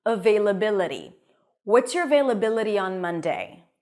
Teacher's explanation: the t is a flap T in American English it sounds a little bit like a d